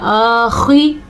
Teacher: خا کو پر بھی پڑھنا ہے اور آخر میں وقف کے ساتھ گول تا گول ہا بن جائے گی.